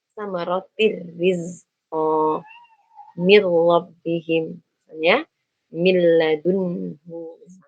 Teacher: Nun sukun dimasukkan ke dalam ro, nun sukun dimasukkan ke dalam huruf lam dengan sempurna. Maka kita tidak menyisakan sifat gunnahnya. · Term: idgham bila gunnah